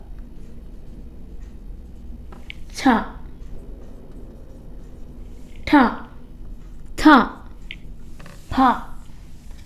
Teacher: അതികരമാകുമ്പോൾ ക് പ്ലസ് ഹ ഖ എന്ന് ഉച്ചരിക്കുക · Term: അതിഖരം